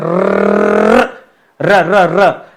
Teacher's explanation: तो जीभ देखेंगे हल्का सा रगड़ के चलता है कंपन करते हुए